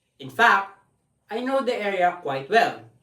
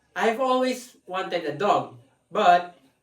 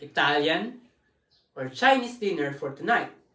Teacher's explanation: there is a Rise in pitch and a fall in pitch in the same sentence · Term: non-final intonation